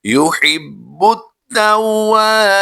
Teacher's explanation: यहाँ पर हमने या मद्दा करते हुए खींचना है, अलिफ मद्दा और या मद्दा में लंबा करके पढ़ेंगे